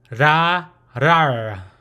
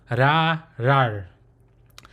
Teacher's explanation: it's more like a rounded open mouth with the tips of the sides of the tongue to the roof of the mouth.